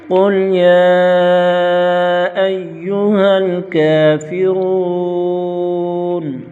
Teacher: قل قاف موٹا مستعلیہ کا حرف یا پر مد منفصل ہوگی، 2 ڈھائی 4 الف تک کھینچ کر پڑھیں گے۔